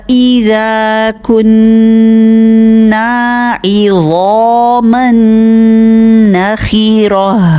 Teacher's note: ذا کو لمبا 2 حرکت کریں گے